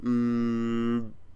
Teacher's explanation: with M the air comes out of your nose